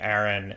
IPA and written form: æɹɪn (Aaron)